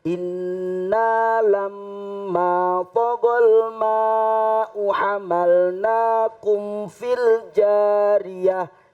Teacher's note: Nah, inna ini gunnah. Jadi harus ditahan dua harokat.